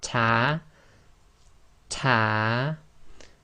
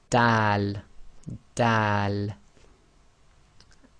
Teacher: the front of the tongue meets the gum and it's slightly on the front upper teeth as well so going over your gums and your front teeth okay so